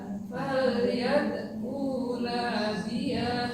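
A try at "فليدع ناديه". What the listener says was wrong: Nya pendek. Falyad'una.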